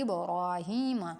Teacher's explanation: با پر قلقلہ ہوگا یعنی کہ ہلا کر پڑھیں گے